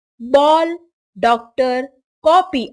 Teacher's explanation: जो औ उच्चारित होता है, वह आ और औ के बीच की ध्वनि है।